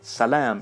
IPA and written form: sɜle̞m (Salaam)